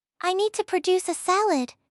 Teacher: But when it is a verb, meaning to make or create something, the stress shifts to the second syllable.